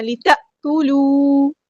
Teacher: یہاں پہ دیکھیں ہم نے جھٹکا دینا، لِتَأْكُلُوا نہیں پڑھنا، لِتَأْكُلُوا، واو مد آیا مد اصلی کریں گے، 2 کاؤنٹ لمبا کریں گے